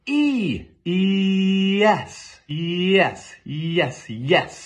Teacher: what we think of as the Y zone is actually just our mouth switching from a long e to the following vowel really fast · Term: Y sound